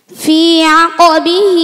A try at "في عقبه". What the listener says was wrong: আকো কি এটা কাফ তো তুমি কলকলা করো কাফের নিচে ফি আকিবিহি তুমি আকিবিহি কও